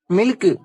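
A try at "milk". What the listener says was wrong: டேய் அதை ஏன்டா சில்க் மாதிரி சொல்ற? கே நல்லா மென்மையா சொல்லணும். மில்க். அதேதான் மில்க்.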